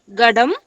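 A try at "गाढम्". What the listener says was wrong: Gadham. Da, Mahaprana. Ghadam.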